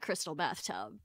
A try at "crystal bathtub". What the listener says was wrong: Every time you say it, you say crystal bathtub. I keep thinking you're saying crystal Beth tub.